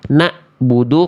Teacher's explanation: Suaranya kalau ain itu dari tengah tenggorokan dan tidak terputus. Kalau hamzah dari pangkat tenggorokan dan suaranya mesti terputus.